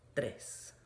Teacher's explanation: this is not trace with a R sound in it. It is a bounced R with that da, right?